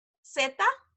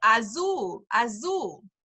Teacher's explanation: in Spanish the letter Z there is no z sound like buzz they don't have that it's an s